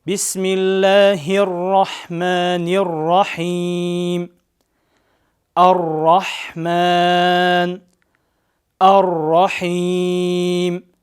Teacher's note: ат-такрир деген сөз бул ро тыбышын айткан учурда тилдин учунун дирилдөөсү. Мына ушул такрир сыфатын өтө ашыкча кылып ар-рахман, ар-рахим же болбосо ар-рахман, ар-рахим деп өтө жок кылып салбастан бир аз билдирип орточо деңгээлде айтылат. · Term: ат-такрир сыфаты